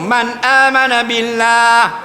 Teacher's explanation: nun mati jumpa dengan Hamzah tak boleh dengung